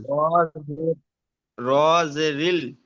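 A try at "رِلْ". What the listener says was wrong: র লাম, র সাথে লামটা যুক্ত করতে হবে, র লামজের রিল।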